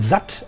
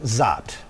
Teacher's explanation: There is a low central vowel which is shorter than the other one